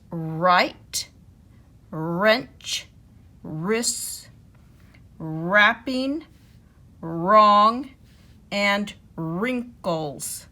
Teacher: all of the WR words that only have the R sound and we don't hear the W is right, wrench, wrists, wrapping, wrong, and wrinkles.